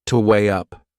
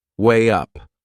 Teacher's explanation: There is another linking sound in that phrase, to weigh up. Can you hear it? We insert a little W sound